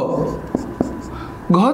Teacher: घ चा उच्चार ग अधिक ह असा होतो. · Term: महाप्राण